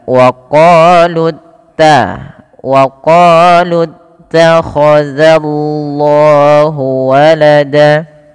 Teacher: Di sini perlu ditebalkan lamnya tapi jangan menebalkan zalnya tidak dibaca waqah tapi dza tipis